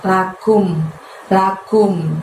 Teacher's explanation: Kumnya di situ dari pangkal lidah kamu, tapi nggak usah diangkat hingga menyentuh langit-langit ya. Lebih lembut, lakum, lakum.